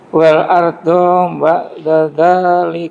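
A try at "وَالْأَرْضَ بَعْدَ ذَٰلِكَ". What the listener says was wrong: Walnya sempurnakan L-nya, jangan tergesa-gesa. Wal ardo gitu.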